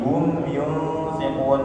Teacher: mim sukun bertemu ya, idhar syafawi berarti jelas, mim sukunnya jelas, kemudian tidak dengung